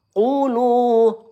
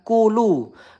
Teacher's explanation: Huruf qof kalau dia domah. Kita tekan ya, pangkal lidah naik. Bukan kulu.